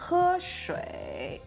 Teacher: when the third tone is pronounced as a low tone, it usually has a low, creaky voice